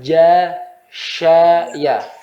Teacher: ja, sya, ya. Dari yang paling rapat, renggang dikit, renggang lebih besar.